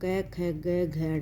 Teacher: इसको बोलते समय जीभ कोमल तालु को स्पर्श करते हैं। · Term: कोमल तालव्य